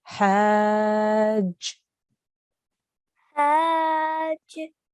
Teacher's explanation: we need to join this ha sound to the jim. Okay, so we will do this by saying hajj. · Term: shadda